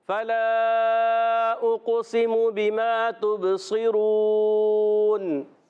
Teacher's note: تبصرون میں صاد موٹے حروف میں سے، عرف مستعلیہ میں سے، بلکہ ایکسٹرا موٹے حروف میں سے بھی ہے، تو اس کو ایکسٹرا موٹا بھی رکھنا ہے۔